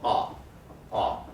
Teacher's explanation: the tongue is mid and pulled towards the back. And then if I raise it for o and oo, still you can see it's pulled back a bit. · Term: back vowels